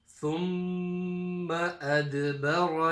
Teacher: Here we have the mim mushaddada gunna, and then you've got the dal qalqala.